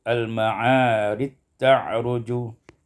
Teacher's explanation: idghamul jim fit ta, diidghamkan jim pada ta menjadi Al-Ma'arij ta'ruju.